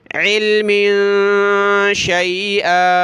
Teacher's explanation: मीम दो ज़ेर में नाक में आवाज़ पैदा करेंगे